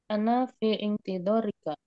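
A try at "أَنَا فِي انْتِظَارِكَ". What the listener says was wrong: Ya, itu disambung aja ya. Jadi fintidorik gitu, biar enak diwasal. Fin, fin, fintidorik,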